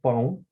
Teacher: Já o substantivo pão, nota-se que ela termina na vogal O, mas pela pronúncia nós temos foneticamente o som de U. Então, nós temos também uma vogal nasal, an, ao lado de uma semivogal.